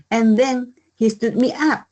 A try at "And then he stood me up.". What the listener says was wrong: And then he stood me up. Let's get this in one unit. And then he. Get rid of the H. Cancel the H. Keep the TH. And then he. Then he.